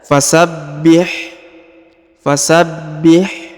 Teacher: huruf ha hanya ha tipis ya dan berharakat sukun, maka dibaca fasabbih.